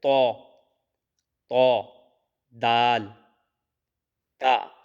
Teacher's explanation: زبان کی نوک اور اوپر کے دانتوں کی جڑ سے ادا کیے جاتے ہیں یہ حروف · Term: حروف نطعیہ